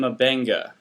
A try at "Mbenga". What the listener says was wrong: Mabenga, but you got to click. Got to make a clicking noise to say it correctly.